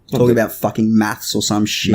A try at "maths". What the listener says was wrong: Maths. Yeah, Maths. It's maths with an F, not with a CH.